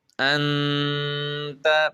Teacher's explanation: جب ہم تا کو پڑھیں گے تو تب غنہ کریں گے